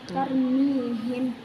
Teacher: Apabila ada fathah atau doma sebelum ra sukun maka dibaca tebal atau tafkim.